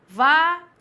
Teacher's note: Você fala vaidade. Então, veja que o A se destaca em relação ao I. Por isso que eu tenho um ditongo.